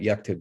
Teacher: so suddenly you still have kt and b in order but you notice the vowel disappears so now the k and the t are right next to each other